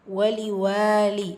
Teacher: வாவில் அலிஃப் மத்தா 2 ஹரக்கத்தளவு நீட்டம் கொடுக்கணும்.